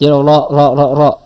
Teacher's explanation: jadi enggak ada getaran lebih tuh tapi rnya sempurna